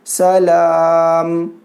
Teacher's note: حالت وقف میں میم کو ساکن کیے